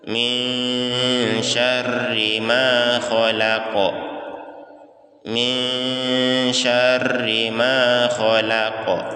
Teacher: Nun sukun bertemu dengan huruf shin, huruf sya, maka kita ikhfakan, berdengung.